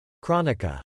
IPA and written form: ˈkrɒn ɪka (Chronica)